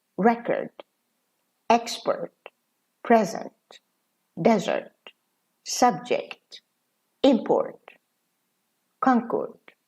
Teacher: stress is on the first syllable, and the second part of the word is very short, and it's unstressed, and it's lower than the first syllable. The first syllable is louder and it's stronger.